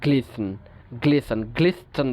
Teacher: অর্থাৎ তিনটা আলভিওলার সাউন্ড একই সাথে চলে আসছে